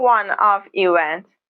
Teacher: the o in one is pronounced with a consonant sound w.